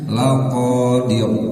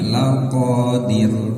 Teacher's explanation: ro ini sebelumnya harakat kasrah maka rnya harus terdengar tipis ya jangan ditebalkan